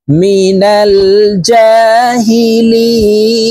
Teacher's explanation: লি এখানে তিন আলিফ টেনে নুনকে সাকিন করতে হবে কারণ মদের হরফের বামের হরফে হইলে মধ্যে আরজি তিন আলিফটা নিয়ে